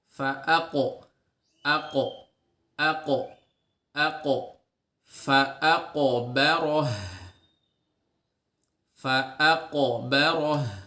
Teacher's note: jangan lupa untuk menebalkan pantulannya karena qaf ini memiliki sifat isti'la tadi, yaitu pangkal lidah yang terangkat ya ke atas sehingga menimbulkan atau memunculkan suara yang tebal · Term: sifat qalqalah